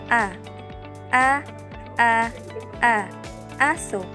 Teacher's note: Nasa ibabang bahagi naman ng bibig ang gitna ng dila sa pagbikas ng letrang A habang ibinaba ang panga. Ang letrang A binibigkas sa paraang A.